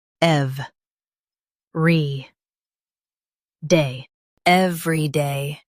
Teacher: Stress EV and keep re-day smooth.